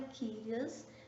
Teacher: O Kyrios é acentuada no y, tá bom? Na antepenúltima sílaba.